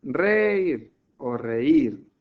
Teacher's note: La fuerte, la tónica está en la I, en la cerrada. Por lo tanto, se separa en sílabas y formaría un hiato.